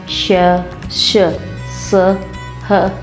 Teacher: इनको बोलते समय मुंह के अंदर वायु घर्षण या रगड़ खाकर मुंह के बाहर निकलती है, इसलिए इन्हें ऊष्म व्यंजन कहते हैं।